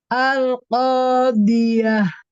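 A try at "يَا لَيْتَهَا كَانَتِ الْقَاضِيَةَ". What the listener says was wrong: Iya, dotnya belum terangkat Umi di sini. Al-qadiyah. Iya, pangkal lidah belakangnya agak sedikit ditegangkan ya supaya dia naik.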